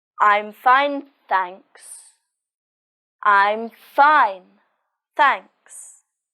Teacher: The stress is on fine, and there's a falling intonation at the end of the sentence.